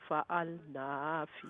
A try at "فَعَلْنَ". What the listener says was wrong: نون لمبا نہیں ہے.